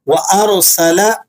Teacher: را ساکنہ ہے، ما قبل مفتوح ہے، را کو موٹا کر کے پڑھیں گے۔